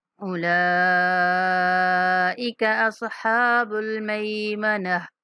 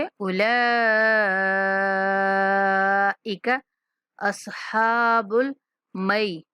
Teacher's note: لام کے اوپر جو مد ہے اس کو 5 سیکنڈ تک لمبی کریں گے اور کاف کو کھینچ کے نہیں پڑھیں گے